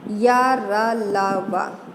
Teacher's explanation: अंतःस्था व्यंजन, इन व्यंजनों का उच्चारण स्वरों और व्यंजनों के मध्य का होता है, इसलिए इसे अंतःस्था व्यंजन कहा जाता है। इनका उच्चारण करते समय हवा मुख के आंतरिक अंगों को कम स्पर्श करती है और उसकी गति भीतर की ओर होती है।